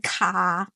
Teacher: Australians are out there saying car or like the Rs just magically disappear. But in American English, the R shows up very bold and proud.